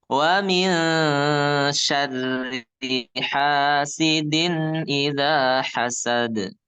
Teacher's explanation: Nunnya jangan dibaca jelas. Jangan wamin. Samar. Suara nunnya disamarkan ya. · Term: ikhfa